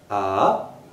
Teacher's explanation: Please note the rising intonation.